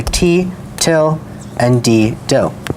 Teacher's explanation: stops that are made with the tongue coming up right behind the teeth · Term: alveolar stops